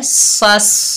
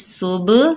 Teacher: सीन बारीक हरूफ है और स्वाद मोटा हरूफ है। तो हमने इनको ऐसे पढ़ना है कि सीन की सीटी बारीक हो, सीन बारीक पढ़ेंगे और स्वाद मोटा पढ़ेंगे।